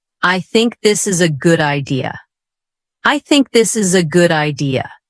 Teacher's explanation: let your voice fall at the end of the sentence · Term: falling tone